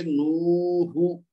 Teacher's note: نون واو پیش نو یعنی واو مد ہوگی نا، 2 حرکت اس کو دیں گے، اور پھر ہا کے اوپر پیش ہے تو ہم پڑھیں گے نو ہو. ہا کو نہیں کھینچیں گے، واو کو کھینچیں گے کیونکہ واو مد